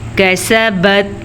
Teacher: باریک کاف، سین بھی باریک، نرمی سے پڑھے جانے والا کاف